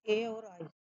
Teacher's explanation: ए और आई उच्चारण कंठ और तालु दोनों की सहायता से होता है।